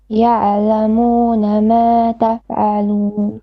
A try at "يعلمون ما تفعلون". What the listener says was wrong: You said يع. يعلمون. No, it's يعل, not يع. Don't put a fatha on it.